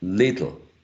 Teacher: in this two syllable word, we have to make the first syllable more prominent than the second one, right? Little, not little.